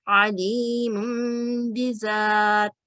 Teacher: پڑھتے وقت نون ساکن یا تنوین میم میں بدل جائے گی، اور اس کو ادا کرتے وقت 2 سیکنڈ غنہ ضروری ہے، جیسے من بعد، اسی طرح علیم بذات۔ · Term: اقلاب